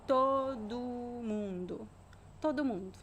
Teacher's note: It sounds like one word, todo mundo. I don't pronounce the two O's. I pronounce just one time, and it doesn't sound like an O, it sounds like U.